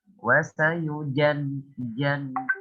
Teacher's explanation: Nah, contoh tadi di beberapa ayat ketika antum baca wasayujannabuhal atqa ya. Nah, ketika huruf masuk ke dalam huruf ja, maka sifat huruf syiddahnya itu harus dikuatkan